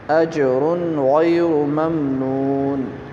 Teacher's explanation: غین کو یہاں موٹا کریں گے، را کو موٹا کریں گے ، ممنون، ممنون نہیں کہیں گے، ممنون، اسی طرح واو ساکن